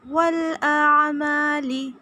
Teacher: عین وہ حلق سے ادا کرنا ہے، لام کو نہیں کھینچنا۔ اعمالی اس طرح سے نہیں پڑھنا، اعمالی۔